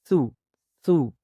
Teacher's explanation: زبان کی نوک سامنے کے دانتوں کے سروں کے ساتھ لگائیں گے اور حرف ثا کی آواز کو ادا کریں گے